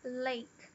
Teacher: A palavra lake, dá pra ver que o L encosta bem no céu da boca